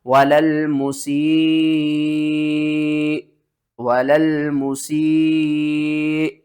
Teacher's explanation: جب حمزہ ساکن ہو جائے گی تو اس کو آپ نے جھٹکے کے ساتھ پڑھنا ہے اور کیا کرنا ہے کہ کھینچ کر سین کو حمزہ کے ساتھ ملانا ہے۔